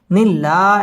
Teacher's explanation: দি মদ্দে তবাই এক আলিফ টেনে পড়তে হবে। নিল্লা আল্লাহ শব্দের লাম বারিক হবে